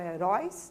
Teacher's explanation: então heróis manteve ali o acento agudo na letra o né é uma palavra oxítona a sílaba tônica sílaba com maior intensidade é na última sílaba · é uma palavra oxítona, né, a sílaba tônica, a sílaba com maior intensidade é na última sílaba, então é heróis, né, se fosse para a gente dividir ficaria heróis, uróis é a sílaba tônica.